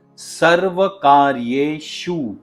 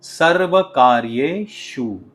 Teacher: यह जो श का साउंड है उसे हम तालव्य श या फिर पलातल स भी कहते हैं। और इस श को एस्टैब्लिश करने के लिए या इस साउंड को लाने के लिए आपको अपनी जीभ को थोड़ा सा रोल करके ऊपर की पैेट की ओर जिसे हम बोलते हैं ऊपर के तालू की तरफ लेकर जाना पड़ेगा।